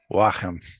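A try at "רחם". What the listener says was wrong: Let's make sure you pronounce the he without friction. So not hem, but hem.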